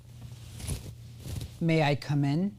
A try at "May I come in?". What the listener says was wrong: Nope. Stop after each word. Slow yourself way down.